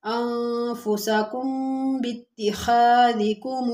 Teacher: اب یہاں پر میم ساکن کے بعد با ہے، تھوڑی دیر آواز بند کریں گے۔